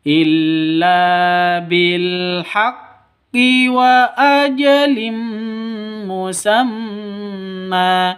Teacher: ada tanwin bertemu dengan mim cara bacanya masuk ke mim disertai dengung Idam bunah am masuk ke mim bunah disertai dengung dua ketukan